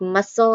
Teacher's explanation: That C isn't making a k or a s sound at all. It's not there. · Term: silent C